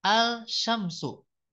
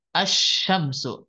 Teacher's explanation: Nah, ini alif lam, ya, bertemu dengan huruf shin kan, huruf shin ini kan dia huruf syamsiah. Nah, maka ketika dibaca tidak al-syamsu, tapi asyamsu. Jadi lamnya tidak dibaca.